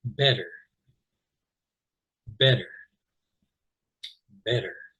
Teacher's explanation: usually in most American accents, the T's in the middle of a word sound much more like D's.